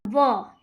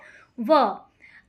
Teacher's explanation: दांत और ओष्ठ दोनों की सहायता से बोला जाता है। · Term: दंत ओष्ठ